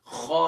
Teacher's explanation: अदना हल्क से अदा कर रहे हैं